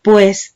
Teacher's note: son dos vocales que están formando un solo núcleo vocal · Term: diptongo